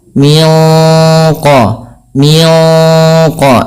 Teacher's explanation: ikhfa yang kepada huruf qf itu ditebalkan menyesuaikan dengan sifat huruf qnya yang tebal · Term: Ikhfa Hakiki